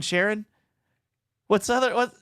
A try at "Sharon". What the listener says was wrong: Sharon. You're saying the way you're saying it makes me think O-N as opposed to E-N. Sharon.